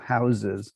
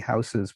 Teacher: So for many speakers, the plural of house, this S here is realized as a Z in the plural, houses